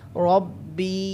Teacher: या मद्दा की वजह से बी को लंबा करेंगे